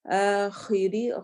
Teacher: ری را باریک پڑھا جائے گا کیونکہ اس کے نیچے زیر آ رہی ہے